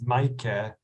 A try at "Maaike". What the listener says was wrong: It's MAAIKE. my last vowel is silent. It's like schwa. It's Maaike.